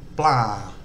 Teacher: because it starts with a mid-class initial consonant it's just got a mid-tone